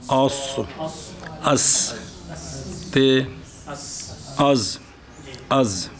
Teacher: زا سین ان تینوں کا مخرج زبان کی طرف اور دو ثنیہ سفلا کی طرف ان کا مجموعہ یہ ان تینوں کا مخرج ہے. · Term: حروف صفیریہ